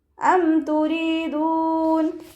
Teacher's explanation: ഹംസയുടെ മഖ്റജ് വരുന്നത് അഖ്സൽ ഹൽക്കാണ്, തൊണ്ടയുടെ അവസാന ഭാഗം. തൊണ്ടക്കുഴി എന്നൊക്കെ നമ്മൾ പറയാറില്ലേ, ആ ഭാഗമാണ് ഹംസയുടെ മഖ്റജ്.